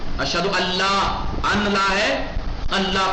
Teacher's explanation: نون کی ہلکی سی بو بھی نہیں آئے گی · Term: ادغام بغیر غنہ